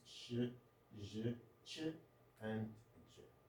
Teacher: The front part of the tongue against the hard palate, we produce sh, j, ch, and j. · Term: post-alveolars